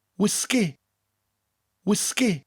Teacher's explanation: we emphasize both syllables and bring out that g sound.